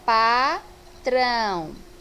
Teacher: Então, aqui na separação silábica, nós iremos perceber que na segunda sílaba eu vou ter aqui um encontro de uma vogal e uma semivogal. O A aqui vai ser a vogal, por ter o som mais forte, e o O, a semivogal, por ter o som mais fraco. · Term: ditongo